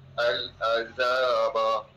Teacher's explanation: Za panjang sikit dua harakat.